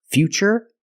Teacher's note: the t is pronounced with the CH sound